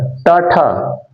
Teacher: स्वर तंत्रियों में कोई कंपन नहीं हुआ